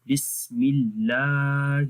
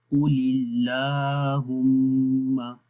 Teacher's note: سے پہلے زیر آ جائے تو اللہ کا نام یعنی کہ اللہ کے نام کے اندر جو لام ہے اس کو باریک پڑھیں گے، ترقیق ہوگی اس کے اندر